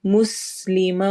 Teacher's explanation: مسلمہ و مس میں سین کی آواز میں سٹی ہوگی